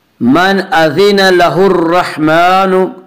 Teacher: اس کا قاعدہ ہے کہ را مشدد متحرک کے اوپر زبر اور پیش آئے تو را کو پر پڑھیں گے، را مشدد متحرک کے نیچے زیر آئے تو را کو باریک پڑھیں گے۔ یہاں را مشدد کے اوپر زبر ہے اس لیے را کو پر پڑھیں گے